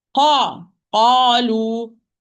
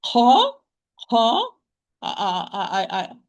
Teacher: So there is no flow of breath when I'm pronouncing the qaf. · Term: majhura